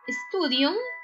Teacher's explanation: la s inicial latina seguida de otras consonantes desarrolló una vocal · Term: prótesis